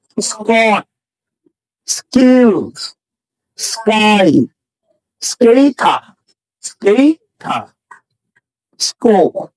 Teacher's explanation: এস এর পরে সি, কে, কিউ যদি থাকে এদের উচ্চারণ ক হবে, খ হবে না